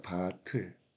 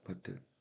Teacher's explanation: 밑에 있는 티읕 받침이 변하지 않고 그대로 이동해요. 그래서 얘는 소리를 연달아 발음한다는 뜻입니다. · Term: 연음 현상